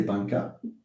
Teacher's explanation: This is a b sound. It's a voiced bilabial stop